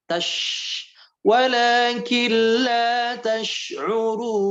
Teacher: Tash'urun jangan dibaca tas'urun, ya. Hurufnya dekat ke geraham.